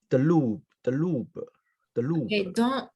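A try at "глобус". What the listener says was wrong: Don't confuse those two letters, G and D. Okay, those are different letters, G and D. Glass и дом, например. Глаз, дом. So G, D.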